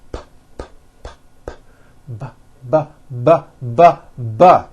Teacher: The only difference is my vocal cords are either vibrating or they're not vibrating. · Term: paired consonants